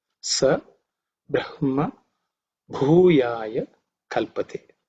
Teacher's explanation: The visarga ha is dropped because of sandhi.